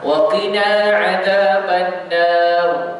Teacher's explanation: Kita baca tebal pada huruf ra yang mati sebelum dia adalah huruf berbaris fathah.